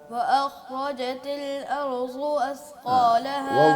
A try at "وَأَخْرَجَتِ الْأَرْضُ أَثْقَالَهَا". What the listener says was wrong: ضاد کا زا نہیں پڑھیں ضاد کو کم از کم.